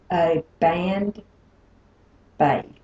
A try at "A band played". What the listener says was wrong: Okay, that's a wrong sound that we might have to work on later. That wasn't stopping. B and P, that was voicing.